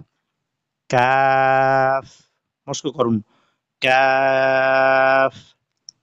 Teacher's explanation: 5 নম্বর মাখরাজ জিহ্বার গোড়া থেকে একটু আগে বাড়িয়ে, অর্থাৎ 4 নম্বর মাখরাজ ছিল জিহ্বার গোড়া তার বরাবর উপরের তালুর সাথে লাগিয়ে, আর 5 নম্বর মাখরাজ হলো জিহ্বার গোড়া ঠিক থাকবে তবে একটু আগে বাড়াতে হবে। 5 নম্বর মাখরাজ জিহ্বার গোড়া থেকে একটু আগে বাড়িয়ে তার বরাবর উপরের তালুর সাথে লাগিয়ে একটি বর্ণ উচ্চারিত হবে কাফ